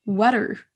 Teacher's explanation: Mais vous avez entendu water. C'est sur la première syllabe qu'on accentue.